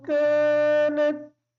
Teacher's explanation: کانت کا جو کاف ہے اس کو باریک پڑھیں گے